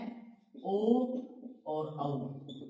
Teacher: इसके अलावा एक और है कंठोष्ठे, यानी कंठ प्लस ओष्ठ, कंठोष्ठे, कंठोष्ठे स्वर जो कंठ प्लस ओष्ठ के सहयोग से बोले जाते हैं, कंठ प्लस ओष्ठ से, और वो है ओ और औ।